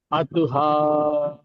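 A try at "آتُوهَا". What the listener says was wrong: నూన్ గున్నా చేయలేదు మీరు.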